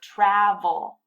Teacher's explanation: the last syllable is not stressed so it gets reduced to schwa